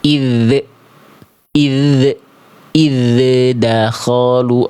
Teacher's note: Beda kalau kita lepas makhrajnya lebih dulu dia pasti ada bunyi dz di ujung pelafalannya. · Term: pantulannya